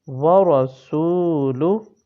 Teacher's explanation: یہاں را کو موٹا پڑھنا ہے اور سین کو واو سے جب ملائیں گے تو واو مدہ ہو رہا ہے، تو اس کو تھوڑا سا لمبا کریں گے